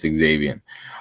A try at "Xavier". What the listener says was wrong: Can we start calling him Xavier? Yeah, because I don't think you pronounce the X. I think it's just Xavier.